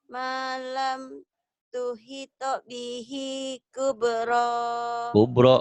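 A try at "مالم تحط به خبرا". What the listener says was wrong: Kubro dari mana ini? Bukan kubro. Kubro, kalau kubro pakai k, ini ya. Malam tuhita bihi khubro. Jangan kubro ya. Kubro pakai k.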